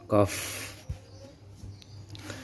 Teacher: pangkal lidah dan langit-langit sehingga keluar huruf qaf